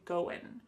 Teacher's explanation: That final G in the word going is going to be cut off and we'll just say going.